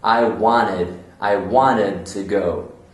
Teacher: In American English, they tend to cut the T sound. So they'll say, I wanted to go.